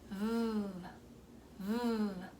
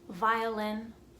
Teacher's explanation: Next we have V, v, v. So it's like a vibration between your teeth and your bottom lip.